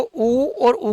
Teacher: उ और उ का उच्चारण कर रहे हैं तो जीवा का जो पीछे वाला भाग है ना वो क्या हो रहा है साहब सक्रिय हो रहा है